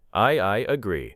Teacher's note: I agree may contain a slight y connection. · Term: linking sound